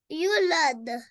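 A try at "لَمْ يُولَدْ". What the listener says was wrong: नो यूलद, एक सेकंड लंबा करना है, वाव मदा है, यूलद, नहीं यूलद नहीं, यूलद कहोगे तो वाव खत्म हो जाएगा और सुकून भी खत्म हो जाएगा, यहाँ पे है यूलद, लंबा करें यू को,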